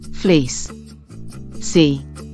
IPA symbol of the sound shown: iː